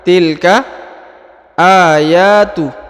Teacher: huruf a dan huruf ya dibaca Dua harakat ya karena di atasnya terdapat Alif kecil